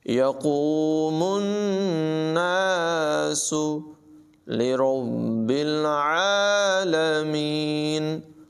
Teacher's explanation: را کو پر پڑھیں گے، با کے ساتھ ملائیں گے اور پھر با کو رک کر ذرا جماؤ کے ساتھ پڑھیں گے اور لام کے ساتھ ملائیں گے، عین کی آواز نمایاں ہوگی،